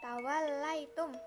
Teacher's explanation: Selanjutnya, tawallaitum merupakan gunah karena mim bertasjid dan cara membacanya dengung ditahan 3 harokat